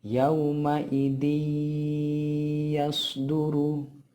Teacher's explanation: dal yang ada tanwinnya itu kita masukkan ke suara huruf ya, kemudian didengungkan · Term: idgham biguna